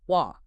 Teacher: That's when the t sound in the middle or end of words like water or better becomes more of a glottle stop a little catch in the throat instead of a crisp t